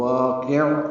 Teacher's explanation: بعذاب واقع، والف مدہ ہے، 2 حرکات لمبا ہے، قاف پر ہے، عین ساکن وسط حلق سے ادا ہوگا، قاف کو عین سے ملا دیں گے، عین پہ اظہار ہوگا وقفاً، یعنی انہیں عین پہ ہلے نہیں، کلکلا نہ ہو